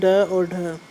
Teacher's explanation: जिसके उच्चारण में जीभ की नोक झटके से तालु को छूकर वापस आ जाती है, उन्हें उत्क्षिप्त व्यंजन कहते हैं।